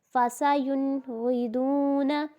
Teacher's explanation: ناک میں آواز نہیں لے کے جانی کیونکہ نون ساکن کے بعد غین آ گیا